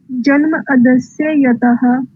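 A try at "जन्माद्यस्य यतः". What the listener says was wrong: जन्म अदस्य, संधि विच्छेद सही से करो। अदस्य तो कोई अर्थ नहीं होता है, और संधि विच्छेद करके पढ़ रहे तो संधि विच्छेद सही से करो उसको। अद्य या अदस्य या आदि क्या होगा? संधि विच्छेद सही से करो।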